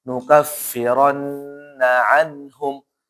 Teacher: Jadi enggak boleh nukffirnaum enggak boleh langsung nun ketemu ha apa hukumnya izhar halq artinya zahir nampak jelas izhar halq jelas di tenggorokan